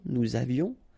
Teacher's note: final S not pronounced, and then little liaison